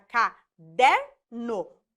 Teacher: a penúltima sílaba é a mais forte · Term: sílaba tônica